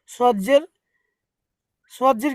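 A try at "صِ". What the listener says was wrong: দেখেন সদটা কিন্তু সিনের মতন সি হবে না সিনজের যেমন সি সজের ওইরকম সি হবে না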